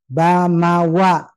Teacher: dia keluar dari dua bibir mim dan ba dirapatkan bibirnya dan rapat yang kuat itu untuk ba sementara Ma lembut